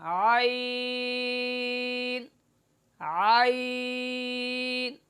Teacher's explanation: ناک میں پڑھنا عین، یہ غلط اس کی ادا ہے۔ اور صحیح ادائیگی کہ وسط حلق سے بغیر آواز دبائے نرم کر کے معروف پڑھنا